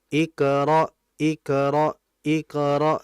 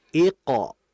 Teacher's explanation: Qof ini adalah huruf yang tebal sehingga kita jangan membacanya tipis.